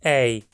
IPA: ɛɪ̯